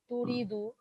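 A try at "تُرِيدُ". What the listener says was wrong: তুরিদু। না, ও সবগুলোই পেশ হবে আপনার, স্টার্টিং এ সবগুলোই পেশ হবে। উরিদু, উরিদু, আর আমরা নুরিদু, নুরিদু। সবগুলোতেই স্টার্টিং এ পেশ আছে।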